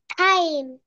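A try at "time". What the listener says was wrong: টাইম, very good.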